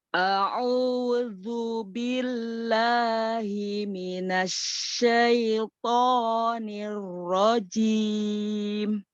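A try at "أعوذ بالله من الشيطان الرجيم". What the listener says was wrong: Oke, sudah lebih baik.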